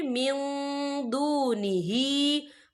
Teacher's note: या देखिए मिन, यहाँ नून साकिन है, नून साकिन के बाद जो है दाल आ रहा है और दाल जो है इक्फा का वर्ड है तो हम यहाँ इक्फा करेंगे, नून साकिन की आवाज़ को नाक में छुपाएंगे।